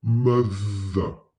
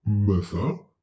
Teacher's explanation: we always stick our tongue between our teeth ever so slightly to pronounce the TH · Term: voiced TH